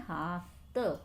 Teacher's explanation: तो ये थ का क्या हो गया है, यहाँ पे त हो गया है, यानी कि त अल्प प्राण व्यंजन है, तो यहाँ पर अल्प प्राणीकरण हो गया है।